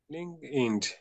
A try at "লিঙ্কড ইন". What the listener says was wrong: ইন্ড না, লিঙ্কড ইন।